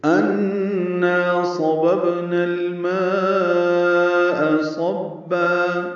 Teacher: ان میں نون مشدد پہ غنہ ہے · با ساکن پہ قلقلہ اور نا الف مدہ ہے ، لیکن اس کو الماء کے لام سے ملانا ہے، اظہار